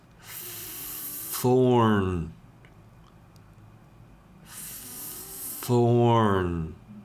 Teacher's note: the N is a continuing sound. It trails off. It doesn't stop abruptly at the end.